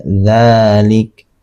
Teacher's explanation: Mad thabi'i di sini dibaca dua harakat. Jadi cara membacanya dzalik dalalik ya itu dibaca dua harakat. · Tapi ini adalah kaidah penulisan sehingga harokatnya ditegakkan itu sudah menunjukkan bahwa ini adalah mad tabii. Mad tabii di sini dibaca dua harokat. Jadi cara membacanya dzalik, dzalik, ya, itu dibaca dua harokat.